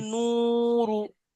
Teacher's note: ওয়া মাদ্দাকে এক আলিফ পরিমাণ টান দিয়ে পড়তে হয়। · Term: ওয়াও মাদ্দা